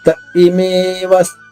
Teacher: ఇ గొంతు నుంచి రావాలి ఆగకపోతే య కి ఈకారం ఇచ్చినట్టుగా తయమేవ అవుతుంది ఆగితే త ఏ ఇమేవ ఇటుక గొంతు నుంచి వస్తుంది. త ఇమేవస్థిత వ